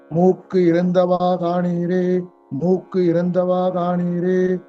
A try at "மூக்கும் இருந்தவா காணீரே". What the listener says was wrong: மூக்கு இல்ல மூக்கும் இம் இருக்கு பாருங்க